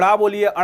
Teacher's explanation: जब जीभ आपके ऊपर वाले पोर्शन में टकराती है तो वो आपका मूर्धन कहलाता है। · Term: मूर्धन्य